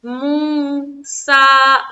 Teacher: دونوں دانتوں کو دبا کر اور سیٹی کی سی مانند آواز نکلتی ہے سین کی